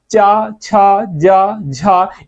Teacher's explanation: च छ ज झ इन चार वर्णों को स्पर्श संघर्षी व्यंजन कहते हैं